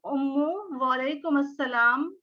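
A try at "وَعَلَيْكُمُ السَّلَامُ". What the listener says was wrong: वालेकुम मुस्सलाम, नॉट मस्सलाम।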